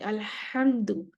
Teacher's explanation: ہا گلے سے نکلے گا، ٹکراتی ہوئی آواز، اسکریچنگ ساؤنڈ ہوگی